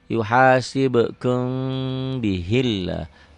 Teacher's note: Lafaz Allahnya dibaca tipis tarkik karena sebelum lafaz Allah baris bawah · ikhfas sapawi, mim mati ketemu ba